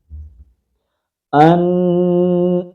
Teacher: آواز کو ناک کے اندر لے جانا ہے اور 1 الف کی مقدار کے اندر تھوڑا لمبا کرنا ہے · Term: غنہ